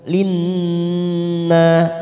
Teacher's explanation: huruf nun yang bertasdid namanya bacaan gunnah kita tekan 3 ketuk. Linna na fathah diikuti alif 2 harokat.